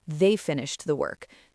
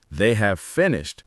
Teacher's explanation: often the H at the beginning is dropped entirely, and the A vowel becomes a schwa